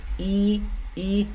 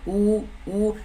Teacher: देखिए आपका मुंह बंद रह रहा है, ओठ पूरा खुल नहीं रहा है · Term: संवृत